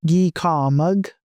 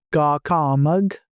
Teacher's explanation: And then the verb has the first vowel sound underlined, that E sound, which changes to an ah sound. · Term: Initial change